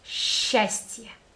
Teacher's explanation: S, ch, two letters together, and we pronounce it like one letter sh.